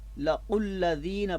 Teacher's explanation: واو جو ہے وہ لکھنے میں آ رہی ہے مگر یہ پڑھنے میں نہیں آئے گی